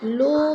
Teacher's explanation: لو میں مد منفصل ہے، چار الفی مد ہے، چار الف کے برابر کھینچ کر پڑھیں گے